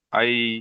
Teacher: ইয়ালিনকে নরম আওয়াজে তাড়াতাড়ি পড়তে হয়, টান দেওয়া নিষেধ।